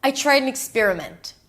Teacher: Tried an experiment are the stressed words and an is really reduced.